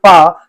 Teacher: when you pronounce this pa, it is voiceless. That means, the vocal cords will not vibrate. The vocal cords here will not vibrate, and that's why this is called a voiceless sound.